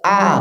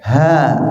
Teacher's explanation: misalnya Pak yang Hamzah tadi Pak itu tidak mengeluarkan udara pak a tidak mengeluarkan udara ya Kalau ha itu mengeluarkan udara ha sama-sama satu tempat tapi yang satu itu ada sifatnya ya